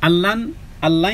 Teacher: ইদগামে বেলাগুন্না মিলিত হবে গুন্না ব্যতীত